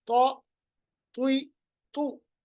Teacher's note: तो को जब आप पढ़ेंगे तो होंठों को गोल करेंगे, आवाज मोटी निकालेंगे।